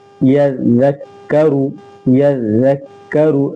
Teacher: زال کو باریک پڑھیں گے، یا زال زبر یز، زال کاف زبر زک، یزک، کاف زبر کا، یزکا، را پیش رو، یذکرو۔